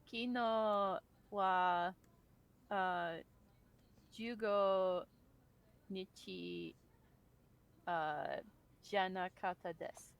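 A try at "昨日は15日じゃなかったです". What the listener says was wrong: Very good. Fantastic. Good job.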